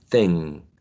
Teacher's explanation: if you are eliding the last consonant sound k, you have to anyway make a nasal